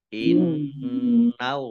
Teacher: nun tasdid dibaca gunnah ya, atau mendengung ditahan sekitar 2 harokat.